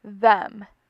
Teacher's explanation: when saying this word you are able to feel the vibration of your vocal folds when producing the th part of the word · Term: voiced sound